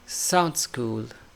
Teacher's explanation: we should say sounds. No need to say D sound.